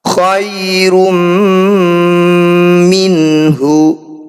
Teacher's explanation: Ada tummah tanwin bertemu mim, ini disebut bacaan idgham bi gunnah. Bunyi tummah tanwinnya langsung masukkan pada mim, kemudian dengungkan dua harokat.